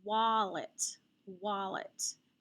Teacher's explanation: with a vccv pattern between the consonants between the two l's i'm going to accent that first syllable · the a is not only following a w there's an l after it it's gonna be an ah sound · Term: schwa